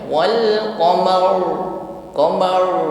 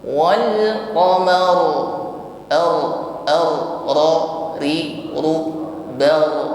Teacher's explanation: ra-nya kita baca tebal, tapi jangan sampai hilang bunyi takrirnya atau bunyi getarannya. Kadang banyak yang mengucapkan ra tebal tetapi seolah-olah suaranya pelat atau cadel, getarannya hilang, ya.